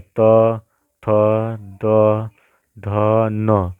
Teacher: दांत से हमारे जीभ लड़ रहा है तो ये दंत व्यंजन हो जाता है